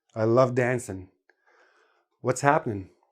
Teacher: we always drop the g